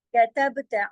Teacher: ता जबर ता है, बस इतना ही पढ़ना है। आ की आवाज साथ आ ऐसे नहीं लगानी, अलिफ लग जाएगा।